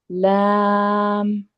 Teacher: لام کو موٹا نہیں کریں گے، لام باریک